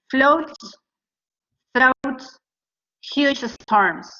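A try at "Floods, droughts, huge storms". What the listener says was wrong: Okay, your voice went down on huge storms. So that means you're done, you're finished with the list. But let's pretend that you're not finished. So you say huge storms, you go up with your voice. It kind of went down.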